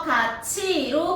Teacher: 디귿, 티읕보다 지읒, 치읒이 모음 이와 가까운 위치에서 소리가 나기 때문에 소리나는 위치를 옮겨 발음을 편하게 하려고 발생하는 현상이에요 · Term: 구개음화